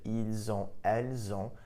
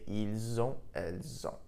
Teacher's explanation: You'll also notice that when I pronounced it, ils ont, elles ont, the S in il, elle, which is normally silent, was actually pronounced, and I pronounced it like a Z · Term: link the two sounds together